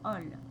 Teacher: La prononciation est ol avec un O ouvert, ol. Exemple, fou, folle, mou, molle.